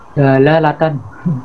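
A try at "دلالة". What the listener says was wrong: Dilalah bukan delalah, dilalatan.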